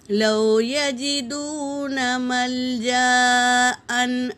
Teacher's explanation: یہاں پر واو ساکن سے پہلے پیش ہے واو مدہ، اسے ایک الف کی مقدار کھینچیں گے